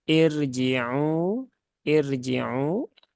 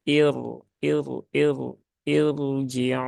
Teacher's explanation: Walaupun dia didahului harakat kasrah nah dia tetap menebal ya dia tetap menebal huruf rnya Jadi bukan dibaca dengan irjiu irjiu tapi naikkan pangkal lidahnya menjadi